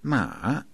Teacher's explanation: Third tone, that's ma, falling rising